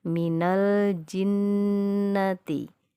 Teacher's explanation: Jadi membacanya dibaca lam sukunnya dengan jelas atau dijaharkan. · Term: idhar qamariyah